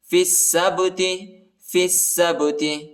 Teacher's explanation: فا کو سین کے ساتھ ملائیں گے، الف اور لام نہیں پڑھا جاتا، اور سین کو با کے ساتھ ملانا ہے، با کو جھٹکے کے ساتھ پڑھنا ہے، حروف قلقلہ کا حرف ہے